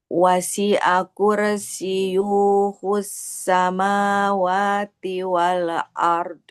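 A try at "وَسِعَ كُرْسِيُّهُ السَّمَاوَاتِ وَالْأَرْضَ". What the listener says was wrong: Ya-nya nggak panjang. Nah, ya-nya kan domah, nggak ketemu waw. Wasi'a kursiyuhu. Nah, nggak boleh yuhu. Wasi'a kursiyuhus samawati wal ard.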